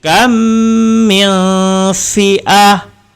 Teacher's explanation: Kam sebab ada mim bertemu dengan mim, maka kena dengung. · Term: idgham syafawi